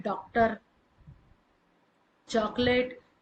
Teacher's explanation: तो जो ओ का भी उच्चारण ना दे और जो आ का भी उच्चारण ना दे बल्कि दोनों के बीच का उच्चारण दे वो आगत ध्वनियां कहलाती है। इसे विदेशी ध्वनि भी कहा जाता है।